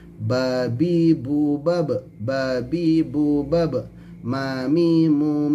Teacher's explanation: tempat keluarnya dengan menutup kedua bibir secara sempurna